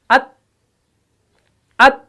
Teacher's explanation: जुबान का जो सामने वाला जो सिर्रा है, नोक जो है, ये सनाया उलिया की जड़ों से लग जाती है। अत, अत, आवाज भी फौरन बंद और सांस भी बंद, सांस बाहर नहीं छोड़ा, अत, अत, तो ये शिद्दत है, तो इसके अंदर दबाव पैदा हो गया।